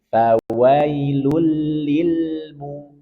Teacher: Fawailul lil. Ada lam sukun, maka berikan sifat bainiyah. Sedikit kita alirkan.